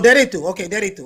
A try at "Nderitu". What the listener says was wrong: No. It's no. The N is not silent. You have to pronounce all the letters like Nderitu.